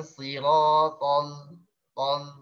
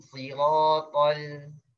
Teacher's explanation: Ya pas di siratal jangan siratal tol tapi siratal. Ditarik sedikit suaranya, bibirnya, biar suaranya tipis, suara huruf lam.